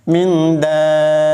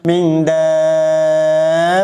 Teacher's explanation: Panjang dulu 6 harokat, kemudian masuk ke dalam ba yang bertasydid tanpa dinaikkan lagi. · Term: mad lazim mustaqal kalimi